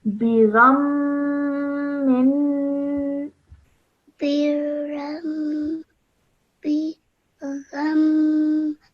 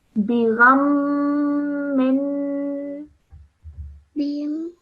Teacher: Just hold that nasal sound for the meme and then the non-nasal sound at the end because of the tanween.